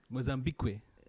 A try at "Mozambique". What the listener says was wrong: No, you don't pronounce. It's not Kwe. It's just Mozambique. It's just there. It's decorative.